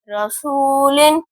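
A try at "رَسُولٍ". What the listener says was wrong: सीन की आवाज क्लियर करें, दांत बराबर करेंगे फिर सीन अदा हो।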